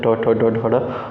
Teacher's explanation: मूर्धन्य यह व्यंजन तालु के ऊपरी भाग मूर्धा से उच्चारित होता है। ट ठ, ड, ड, ड।